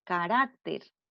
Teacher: Lleva tilde porque termina en R y la sílaba tónica está ubicada en la penúltima sílaba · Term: palabra grave